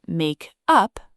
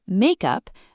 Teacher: In the phrasal verb make up, the stress is on the second word, up, but in the noun makeup, the stress is on the first word, make. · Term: stress moves